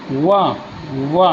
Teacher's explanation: दंतोष्ठ्य ऊपर के दांत और निचला ओठ